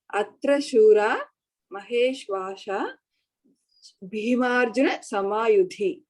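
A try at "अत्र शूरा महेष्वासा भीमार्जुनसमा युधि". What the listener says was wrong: When you pause there itself, you have to put samasa. Atra Shura Maheshwasaha. Visarga is there.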